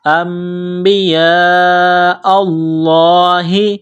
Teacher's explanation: ساتھ ملانا ہے، غنہ کریں گے، آواز ناک میں چھپائیں گے، نون ساکن کے بعد با ہے، یہاں اقلاب غنہ کیا جائے گا · یہ لمبی مد ہے، 4 الف کے لمٹ میں کھینچنا ہے